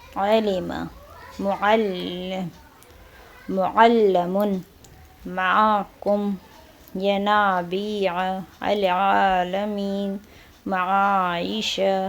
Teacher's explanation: اس حرف کو حلق کے درمیانی حصے سے نرمی کے ساتھ ادا کیا جائے گا. عین کو حلق کے درمیانی حصے سے ادا کرنا ہے، اس طرح کہ کھینچنے کی آواز آئے، البتہ بہت ہی زیادہ نرمی کے ساتھ ادا نہیں کیا جاتا. · اس بات کی طرف توجہ ضروری ہے کہ حرف عین کو پرحجم اور بھاری ادا نہیں کیا جائے گا، یعنی عین کی آواز کو ہم نے موٹا ادا نہیں کرنا ہے، باریک ادا کرنا ہے